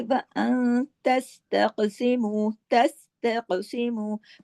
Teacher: اخفا کیسے ہوا؟ تھوڑی سی آواز ناک میں چلے گی نا، تھوڑی باہر رہی، پھر چھوٹا غنہ بھی ہو گیا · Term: اخفا حقیقی